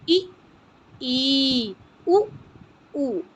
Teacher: मुख प्रायः बंद या बहुत कम खुलता है। जब आप क्या बोलते हैं बच्चों, ई, उ, इसमें हमारा मुंह प्रायः बंद या बहुत कम खुलता है, इसको बोलते हैं संवृत।